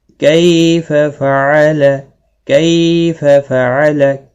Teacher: وَأُوتِيَ كِتَابَهُ كَيْفَ فَعَلَ، کیف فعل، کئی آواز سے آپ کو پتہ لگ گیا ہوگا کہ کئی یا لین ہے، تھوڑا نرمی کے ساتھ کھینچ کر ادا کیا جائے گا۔ کئی فعل، کسی بھی حرکت والے حرف کو کھینچنا نہیں، کئی یا لین ہے، تھوڑا نرمی کے ساتھ کھینچ کر ادا کیا جائے گا۔